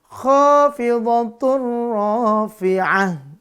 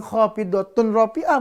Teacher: Lebur masuk tanpa dengung. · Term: Idgham bila gunnah